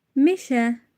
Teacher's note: Meşə incə saitli sözdür və dodaqlanmayan saitlərdir.